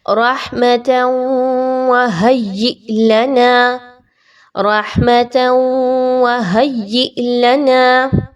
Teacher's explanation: ہا اور یا کو آپ آپس میں ملانے کے بعد حمزہ کو جھٹکا دے کر پڑھیں گے